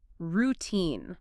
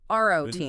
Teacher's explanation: Make sure that second syllable is long and heavily stressed. Routine, not roine.